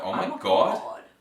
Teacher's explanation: yeah it goes up and it's quite sing song-y